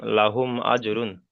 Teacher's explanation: মিম সাকিনটাকে বিনা গণনায় জাহির করে পড়তে হবে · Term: ইজহারে সাফাবি